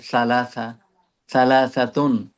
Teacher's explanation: জিভা বের করতে হবে। দাঁতের থেকে বাইরে আর দাঁতের সাথে মিশাতে হবে।